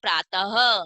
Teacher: त के बाद में ह की ध्वनि लगाते हुए बोलेंगे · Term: विसर्ग